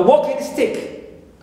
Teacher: The same thing also for a walking stick, as a compound word and noun, gerund plus noun, we here also we stress the first one because it's a compound word